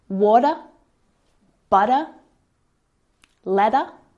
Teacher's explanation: we usually use the flap T between vowels and that means that the T sound sounds more like a d